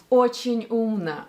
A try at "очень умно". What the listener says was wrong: Очень умно. Очень умно. First, очень умно. We should say очень умно. Second, n is out of place. It should be lower. Очень умно. Очень умно. Очень умно.